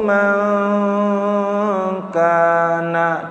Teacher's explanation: dengung lagi, nun sukun ketemu kaf ya